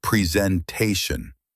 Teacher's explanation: The stress is on TAY.